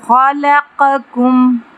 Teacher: خا پہ تفخیم کریں گے، قاف پہ تفخیم کریں گے، موٹا پڑھیں گے